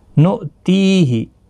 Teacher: حمزہ ساکن کو جھٹکے کے ساتھ ادا کیا جاتا ہے، نو نہیں پڑھنا ہے